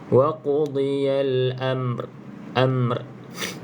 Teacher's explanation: bila bertemu dua huruf sukun yang belakang kita jangan abaikan Dia kena bunyikan juga tapi bukan bunyi barislah okey cuma getarkan sikit sebab R ni ada sifat takrir Wal · cuma getarkan sikit sebab ra ni ada sifat takrir